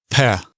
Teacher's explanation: this letter sounds like an English P, but perhaps it's not as strongly aspirated. There's not quite as much of a pop to it.